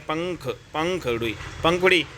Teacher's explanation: नाक और हवा दोनों से यहां पे निकल सॉरी यहां पे नाक और मुख जो है दोनों से यहां पे हमारी हवा निकल रही है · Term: अनुनासिक